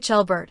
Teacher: with a slightly longer and more open a sound than in English, and the L is more distinct. The T is also pronounced more sharply.